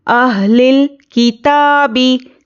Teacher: ता पर खड़ा ज़बर है, बराबर है अलिफ मद्दा के, इसको एक अलिफ के बराबर खींचेंगे।